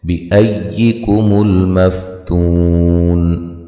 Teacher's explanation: حمزہ کو یا سے سختی سے ملائیں گے، تو و مدہ ہے۔